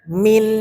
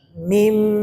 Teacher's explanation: ba ikqlab jadi di sini banya tanwinnya diganti menjadi huruf mim jadi enggak dibaca Min tapi mim mulutnya iltimas jangan terlalu tekan nempel saja itu